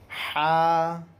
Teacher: درمیان حلق سے حا ادا ہوتا ہے۔